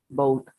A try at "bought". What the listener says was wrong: Aquí no se pronuncia la U. No bow.